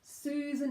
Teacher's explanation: Susan has oo, long vowel oo. Susan, and then short schwa, unstressed syllable second, n.